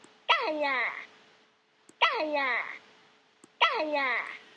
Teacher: it's starting with a very high pitch, which falls